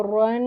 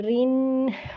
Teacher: یہاں پہ را کو جو زبر اور پیش ہیں موٹا کر کے پڑھیں گے اور زیر والے را کو باریک پڑھیں گے